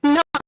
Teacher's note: when you say a sound like no you are saying it through your nose. The air you emit is coming much more from your nose and less from your mouth